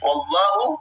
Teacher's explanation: Wallahu tafkhim. Wallahu tebal. Jangan mencucu, apalagi kita membaca wallah.